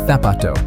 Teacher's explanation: In Latin America, the word for shoe, zapato, sounds just like it starts with an s, sapato. But in a lot of Spain, they use a th sound, so it comes out like thapato.